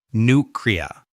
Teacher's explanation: in North American accents, they will drop the y sound from the first syllable.